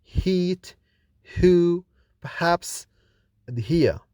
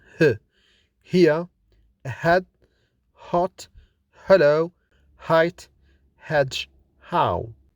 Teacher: Identification of the consonant h. This consonant is articulated with the narrowing of the airflow in glottis. It is kind of breathing out with an audible friction in the vocal cords.